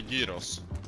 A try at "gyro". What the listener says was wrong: Gyros. Yeah, but that's the Greek way of saying it. Well, to be fair, it's gyro. No S. Gyro. Yeah, I mean, you made it sound French somehow, but sure.